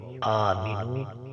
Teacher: حمزہ کے اوپر کھڑی زبر ہے، اسے 1 الف کے برابر کھینچا جائے گا